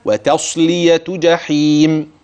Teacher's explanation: ليه؟ لان التاء ترقق والصاد تفخم، فلا تطغى الصاد على التاء أو العكس بالعكس، فيتأثر هذا بذاك فتتحول التاء إلى حرف آخر أو تتحول الصاد إلى حرف آخر.